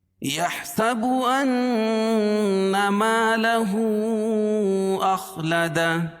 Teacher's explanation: اخلد خا کو موٹا پڑھیں گے کیونکہ حروف مستعلیہ میں سے ہے، اور یہ اخلدہ الٹا پیش جو ہے وقف کی صورت میں اس پر جزم لے کر آئیں گے، یعنی اس کو ہائے ساکنہ سے بدل دیں گے۔